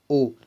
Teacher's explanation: ओ के साथ औ भी जो है वो कंठ और ओष्ठ से मिलकर बोले जाते हैं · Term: कंठोष्ठ वर्ण